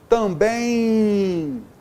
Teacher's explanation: além de ser uma semivogal, esse M serviu para nasalizar a vogal anterior